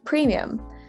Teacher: that eye is a little bit like an e but it's actually a very soft yee sound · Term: very soft Y sound